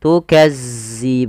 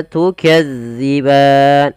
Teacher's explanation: ujung lidah kita agar sempurna daripada makhrajnya, kita tempelkan ujung lidah kita dengan gigi seri atas, maka za, maka tukazziban. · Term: huruf zal